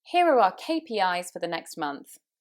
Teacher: KPIs and next were quite key here, so my voice slightly raised on those.